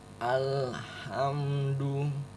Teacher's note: Ingat makronya atau tempat keluarnya itu wastul alki, tengah-tengah tenggorokan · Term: huruf H